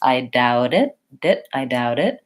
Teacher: it's a light voiced flap T sound